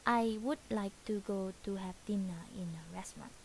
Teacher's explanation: we can still pronounce the S in the middle of the word restaurant